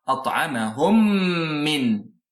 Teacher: the rule associated with meme mushaddada is that you make nasal sound ghunna for 2 units of time · We merge the two into one meme, mushaddada. The Quran is telling you here that you will need to merge both into one, and this will become a one meme mushaddada.